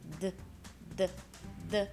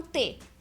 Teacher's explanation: se você põe a mão aqui você sente as suas pregas vocais vibrando agora fala um t as pregas vocais não estão vibrando